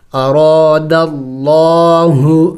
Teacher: دیکھیں لفظ اللہ سے پہلے زبر ہے تو اس کو موٹا پڑھیں گے